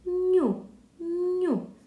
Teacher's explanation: звуку То вона що робить дарує літери ще одну паличку і звук ну стає м'якенький ню позначається двома паличками літера U після приголосного позначається кружечком рахуємо скільки